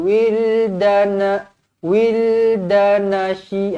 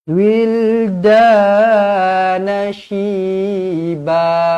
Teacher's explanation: ini alif kecil ni adalah mad asli ya, dibaca panjang dua harakat. Jangan wildana, wildanashi, ah bukan macam tu.